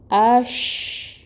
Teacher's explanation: شین میں تفشی لائیں گے، اس کی صفت ہے۔